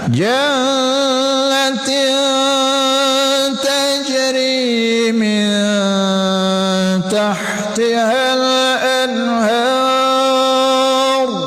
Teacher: Janna berdengung wajib ghunah